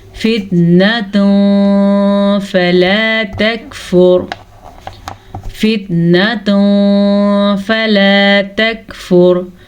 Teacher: تنوین کے بعد فا حروف اخفا میں سے آیا ہے تو ہم تنوین کو چھپے غنے کے ساتھ پڑھیں گے. یہاں پہ اخفا ہو رہا ہے.